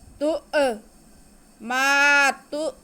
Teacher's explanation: تؤمرون، جی، تا پہ پیش اور آگے حمزہ ساکن، تا کو حمزہ کے ساتھ ملا کے پڑھیں گے اور جھٹکا لگائیں گے کیونکہ حمزہ ساکن ہے۔